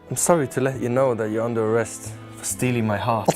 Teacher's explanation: when a Norwegian mouth hits a th, it grabs the nearest thing on the shelf. Which is t or d.